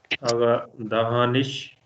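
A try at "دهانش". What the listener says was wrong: दहानश नश, spoken पर्सन में आप कह सकते हैं दहानिश, लेकिन अभी जो हम सीख रहे हैं दहानश है, आ के साथ आता है, दहानश।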